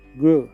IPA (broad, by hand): ɡruː